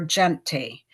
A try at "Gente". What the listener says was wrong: It's Janet. don't pronounce the last E because it's the Netherlands. It's a Dutch language.